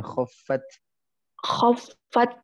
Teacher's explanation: Ada sisa suaranya, ada sisa hamasnya